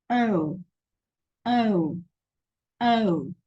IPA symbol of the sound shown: əʊ